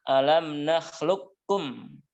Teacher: alam nahlukum ini dibaca dengan Idgham Kamil dibaca dengan sempurna artinya semua sifat huruf qaf di idgham kan ke huruf Kaf tanpa tersisa